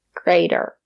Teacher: The letter T is between vowels. We pronounce it as the fast D.